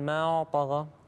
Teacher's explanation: بعدين الحرف الطاء ندخل عليه اللي هو المفخم، أما قبلها الألف مرققة ما طغى، فما تأثر الطاء على الألف نقول ما طغى تمام.